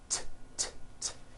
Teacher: It's unvoiced. Your vocal cords are not vibrating.